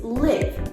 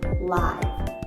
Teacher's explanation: the first l-i-v-e is liv with the short i sound liv and the second l-i-v-e has a long i sound live